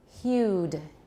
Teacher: hued u is not a phoneme we counted as two sounds it's a special diphthong it's a rising diphthong